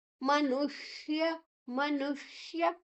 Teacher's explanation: ನು ಆದ ನಂತರ ಶು ನಾಲಿಗೆಯನ್ನ ಮಡಚಿ ಹೇಳಬೇಕು ಅದನ್ನ ನಾವು ಆ ಮೂರ್ಧನ್ಯಷ ಅಥವಾ ಷಣ್ಮುಖ ಶ ಅಂತ ಹೇಳ್ತೇವೆ ಮನುಷ್ಯ ಲೋಕೆ